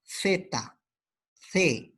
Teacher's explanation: La interdental, la lengua se ubica entre los dientes.